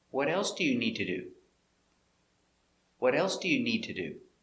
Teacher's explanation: Here, else is the important word. And need, the verb, is important.